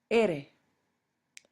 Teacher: R is the letter name for R, And the English R and the Spanish R are formed very differently. The Spanish R, your tongue is going to make a vertical and not a horizontal movement.